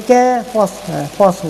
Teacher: hamas huruf sad dia seperti huruf sin. Dia ada hamas lah, senang dia berangin.